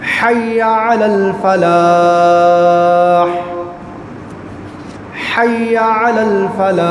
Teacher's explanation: اب ادھر آ جائے، حی، ادھر دونوں ہا حلقی ہیں، شروع والا بھی ہا حلقی ہے حلق کے درمیان والا، اور اینڈ والا ہا بھی حلق کے اینڈ والا ہے